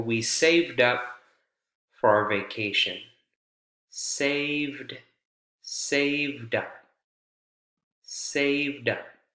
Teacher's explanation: There's a linking that takes place there, right? The D almost as though it transfers over to the next word.